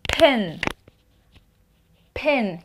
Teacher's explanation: You will feel the air, but no vibration.